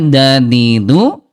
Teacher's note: Ujung lidah yang bertemu dengan pangkal gigi seri atas